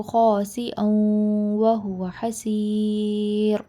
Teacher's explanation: واو سے پہلے اگر تنوین آ جائے تو ہم اس کو ملا کر پڑھ دیتے ہیں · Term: ادغام